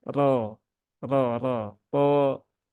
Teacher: sama dengan huruf-huruf tebal yang lain yaitu dengan menaikkan pangkal lidah